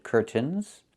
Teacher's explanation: It's curtains with a real T, curtains.